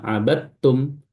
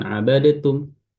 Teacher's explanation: dal ketemu ta langsung masuk secara sempurna abadtum bukan abadatum ya.